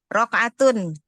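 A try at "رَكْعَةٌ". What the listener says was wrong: Raka'atun. Kafnya sukun.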